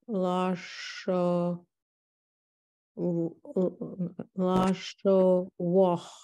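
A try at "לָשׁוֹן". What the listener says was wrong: That's a nun. Just lashon. That's not a vav. That's a o vowel. That can be very confusing. So if there's a dot, it's a vowel.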